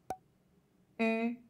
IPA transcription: y